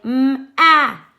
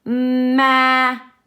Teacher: notice how my voice does not turn off in between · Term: slow and stretchy